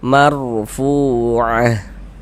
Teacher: Kemudian fu dibaca panjang